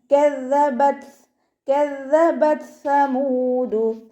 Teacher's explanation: ദാലിന് ശ്രദ്ധ വന്നിട്ടുണ്ട്, 2 ഹർഫുകൾ ഉച്ചരിക്കുന്ന കനം കൊടുക്കുക. ത സുക്കൂനിലാവുമ്പോൾ കുറച്ച് എയർ പുറത്തോട്ട് പോണ സൗണ്ടിൽ വേണം കേട്ടോ ഉച്ചരിക്കാൻ